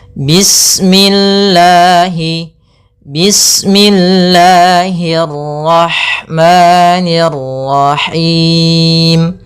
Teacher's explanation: Panjangnya lafal Allah yaitu 2 harakat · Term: mad tabi'i